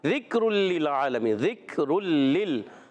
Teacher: اب یہاں ذال کو کاف سے ملانا ہے, کاف ساکن ہے. رلل, تنوین کے بعد لام آ گیا, ادغام بلا غنہ کا ادا ہوگا.